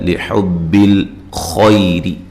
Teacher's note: خا کو موٹا پڑھنا ہے، یا لین ہے، را کو باریک پڑھنا ہے